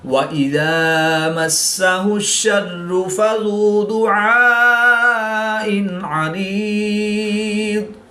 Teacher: حمزہ اور عین حروف قریب الصوت میں سے ہیں، یعنی ملتی جلتی آواز والے حروف ہیں۔ عین کو حلق کے درمیان سے ادا کریں گے اور حمزہ کو حلق کے نیچے والے حصہ سے ادا کر کے پڑھیں گے۔